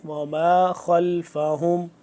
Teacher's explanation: خا کو پر کر کے پڑھیں گے